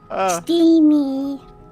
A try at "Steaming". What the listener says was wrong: Steaming with a G.